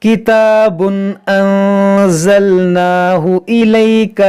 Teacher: یہاں پر تنوین کے بعد حمزہ ہے تو یہاں پر اظہار کریں گے · یہاں نون ساکن کے بعد زا حروف اخفا ہے تو یہاں پر اخفا کریں گے، یعنی یہاں پر غنہ کریں گے